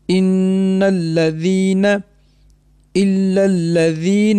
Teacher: ہوگا، ان الذین۔ نون مشدد آ گیا، آپ نے یاد رکھنا نون مشدد میں ہمیشہ غنہ ہوگا، 2 سیکنڈ کے لیے ناک میں آواز رہے گی ، یا غنہ ہمیشہ ناک سے ہی ادا ہوگا، ان الذین،